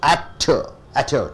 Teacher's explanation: You stress on the first syllable.